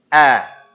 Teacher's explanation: huruf hamzah, ingat keluar di pangkal tenggorokan dan dia tipis.